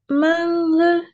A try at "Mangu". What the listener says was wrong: Mangu. Le G doit être dur. Ce n'est pas R.